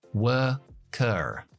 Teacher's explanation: Nosotros no pronunciamos las R's después de las vocales. Si yo fuera estadounidense, metería una R después de la última schwa.